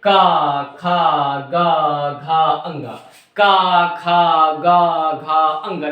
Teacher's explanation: पूरा का पूरा जो वाइब्रेशन है वो आपके कंठ में ही हो रहा है